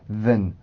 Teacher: 그래서 이 than이라는 단어가 강해지는 경우는 거의 없는데 발음 기호상으로 봤을 때는 이렇게 장음인 에 발음으로 해주지만 문장 안에서 기능어 역할을 대부분 해주기 때문에 보통은 then, 슈아 발음으로 바꿔서 하는 경우가 많습니다. 그래서 여러분들은 두 개를 다 알고 계시면 좋긴 하겠지만 일단은 이 슈아 발음을 활용해서 더 많이 발음한다고 보시면 돼요.